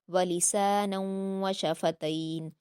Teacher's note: وشفتین میں تا پر یائلین ہے، اس کو معروف پڑھیں گے · نون کی تنوین کے بعد واو ہے تو ادغام یرملون غنہ کے ساتھ ہوگا